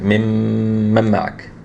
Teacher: you did two haraka on the meme, but you didn't do the two haraka on the noon